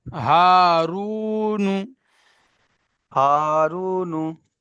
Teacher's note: নুনের উপরে পেশ হারাকা তাড়াতাড়ি পড়তে হবে, টান দেওয়া নিষেধ।